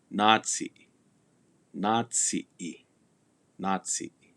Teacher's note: that double A that indicates lengthening that the a is pronounced a little longer